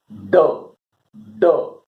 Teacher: अगला मूर्धा, जिसे कहेंगे ड, ड, जिह्वा पीछे जाती है और जिसे कहेंगे थोड़ा सा झटका मारती है, और जिसे कहेंगे ड ध्वनि उत्पन्न होती है।